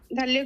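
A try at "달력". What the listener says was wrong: ধাল্লিয়ক নয়, থাল্লিয়ক। উচ্চারণ সঠিক করতে হবে।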